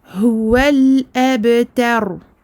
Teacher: concernant le ra, il est sakin précédé d'une fatha, donc il est emphatique.